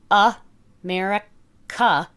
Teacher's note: So if you have the word America, you hear America. There's a schwa at the beginning and a schwa at the end. And even though it's spelled with an A, it still makes the sound.